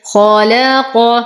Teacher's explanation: نفخم الخاء، نخلص اللام من تفخيم الخاء، وأيضا نفخم القاف